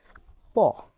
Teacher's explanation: উষ্ট স্পৃষ্ট প যখন উচ্চারণ করবেন দেখবেন আপনার ঠোট দুটো একসাথে লেগে যাচ্ছে। আপনি যদি ঠোর দুটো আগে না লাগান উচ্চারণ করতে পারবেন না।